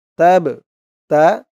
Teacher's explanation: কলকলার হরফ ধাক্কা দিয়ে পড়তে হবে